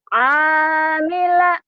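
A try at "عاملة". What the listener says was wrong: Kurang ke dalam ainnya.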